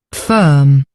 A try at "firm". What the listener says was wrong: Your voice is just cutting out when you get to the vowel sound. I hear the F, but I don't hear the I.